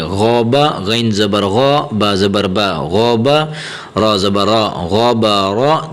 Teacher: یہ غین اور را یہ دو حرف وہ ہیں جنہیں موٹا کر کے پڑھا جاتا ہے، ٹھیک ہے، منہ گول کر کے۔